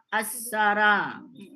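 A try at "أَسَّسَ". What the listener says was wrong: Nah, makanya asara jadinya kan. Sebenarnya bukan asara, asasa. Tulis enggak ada asara. Enggak ada asa pakai ra. Asasa. Ya, ini harusnya ini naik ke atas gitu.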